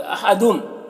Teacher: दुम में इदगाम नाक़िस हो रहा, गुन्ना के साथ में पढ़ेंगे